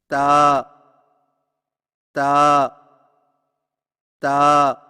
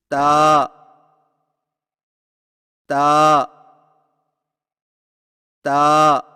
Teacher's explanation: تا کی ادائیگی میں زبان کی نوک کو سامنے والے اوپر کے دو دانتوں کی جڑ سے لگا کر باریک آواز میں پڑھیں، یعنی تا تا تا۔